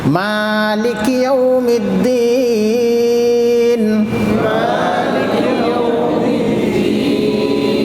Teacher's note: ایک الف یعنی 2 حرکت کے برابر کھینچا جائے گا، اگر نہیں کھینچیں گے تو 1 حرف کم ہو جائے گا۔ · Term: مد اصلی